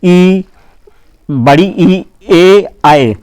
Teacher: ऐसे स्वर जिनके उच्चारण में जीभ का अग्रभाग काम करता है, उसे अग्रस्वर कहते हैं